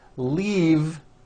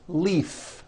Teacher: this last word leave is very different from the word leaf like from a tree which has an unvoiced F